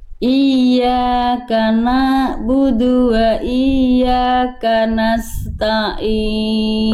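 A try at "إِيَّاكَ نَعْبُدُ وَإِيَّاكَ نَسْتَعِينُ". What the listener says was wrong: Ini jadi Bunda kadang-kadang ainnya masuk ke huruf ta, kadang-kadang ainnya jadi ragu jadinya kayak hamzah. Iyyaka na'budu wa iyyaka nasta'in. Ta'in. Ain.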